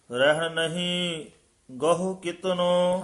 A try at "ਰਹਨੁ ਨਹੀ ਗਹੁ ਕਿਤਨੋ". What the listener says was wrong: ਦੋਵੇਂ ਨੰਨੇ, ਰਹਿਨ ਨਹੀਂ ਗਹੁ ਕਿਤਨੋ।